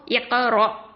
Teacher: ஹம்சால சுக்கூன் இருக்கறனால ஒரு நிறுத்தத்தை கொடுக்கணும்